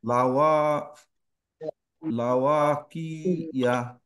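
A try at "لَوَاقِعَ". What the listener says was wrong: না আইন ফাথা আ। লাওয়া কি আ। আপনি যে ইয়া বলছেন ইয়া হচ্ছে ইয়া যদি হতো এইটা ফাথা হচ্ছে ইয়া, হামজা হামজা ফাথা আ, আর আইন ফাথাও আ, দুইটা একটু ডিফারেন্স, এটা একটু গলাটা ভেঙে আ, আর এটা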